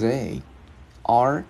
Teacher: mình đưa lưỡi qua giữa hai răng mình ép rung